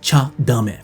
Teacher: if the verb in the te form is just a te then it turns into a cha when it's bleeding together